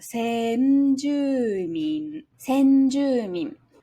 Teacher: So we begin with se low, high for n-ju, and then we drop back after that · is a nakadaka word, where ん (n) and じゅ (ju) are higher pitch and the rest are low